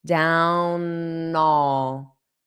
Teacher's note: So when I pronounce that all, you're going to hear a little bit of the N.